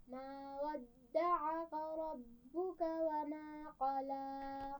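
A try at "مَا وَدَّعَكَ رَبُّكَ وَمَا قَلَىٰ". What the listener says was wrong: वद्दअक, इसमें सारी आवाज़ें बारीक हैं, ठीक है, मोटा नहीं पढ़ेंगे।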